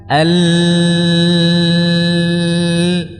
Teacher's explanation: Jawabannya adalah karena suara tadi membelok jalurnya, alirannya, ya, ke arah kanan dan kiri lidah, ke sisi kanan dan sisi kiri lidah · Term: inhiraf